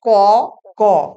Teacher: প্রতি বর্গের প্রথম এবং তৃতীয় ধ্বনির উচ্চারণে নিঃশ্বাস জোরে নির্গত হয় না বলে সেগুলোকে বলা হয় অল্প প্রাণ ধ্বনি। প্রাণ বলতে এখানে শ্বাস, শ্বাস অল্প বেরোচ্ছে তাই অল্প প্রাণ।